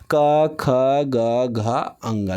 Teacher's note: एकदम पूरा का पूरा इसका उच्चारण कंठ से होगा